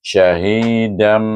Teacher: Bacaan iqlab dengan dengung dua harakat. Syahidam, bibir tertutup.